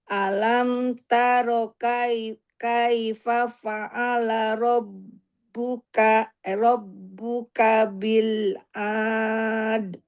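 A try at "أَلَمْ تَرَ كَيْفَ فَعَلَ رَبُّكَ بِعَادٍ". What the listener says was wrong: Enggak ada bil. Bi'ad. Jangan diputus. Alam taro kaifa fa'ala rabbuka bi'ad.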